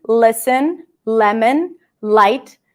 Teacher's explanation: Once the L opens up to a vowel, it's a light L. That means that just the tip of the tongue touches. There is a little bit of tension here.